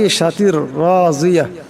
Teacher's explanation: রাকে মোটা করিয়া পড়তে হবে রার উপর জবর আসছে এবং এই জওয়াদকেও মোটা করিয়া পড়তে হবে